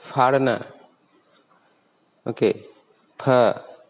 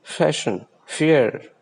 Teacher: The fa sound of Hindi is bilabial sound. That means the two lips, bottom and upper lips, touches each other when we say fa sound in Hindi.